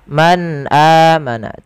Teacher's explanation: nun sukun bertemu dengan huruf hamzah cara membacanya nunnya dijelaskan dengan jelas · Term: izhar